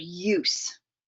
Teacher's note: As the mouth closes and the placement of the sound moves toward the back of the mouth with the tongue coming up towards the roof of the mouth until you get to sounds like you in the word use.